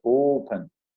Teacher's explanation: A sílaba tônica está no O e não no pen.